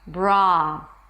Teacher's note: we start with a B sound, then the R, bra, and open it to the ah as in father.